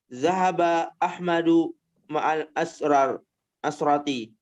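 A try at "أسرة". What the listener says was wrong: Mana asrah? Keluarga usrah atau asrah? Usrah. Usrah. Ya, usrah ya dengan di domah. Bidom harfi hamzah.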